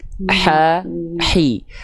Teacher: H kecil itu makhrajnya dari tengah tenggorokan. Tengah tenggorokan itu titik yang berwarna putih di sini.